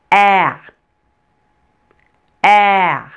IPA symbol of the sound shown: æ